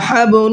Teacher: با کے اندر قلقلہ کریں گے